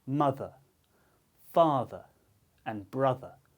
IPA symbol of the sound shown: ə